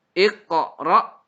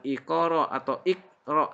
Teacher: qalqalah qaf kemudian ra disukunkan berhadapan dengan hamzah